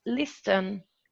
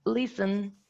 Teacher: there's no voiceless alveolar plosive sound